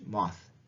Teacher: The theta is our regular TH, voiceless TH in English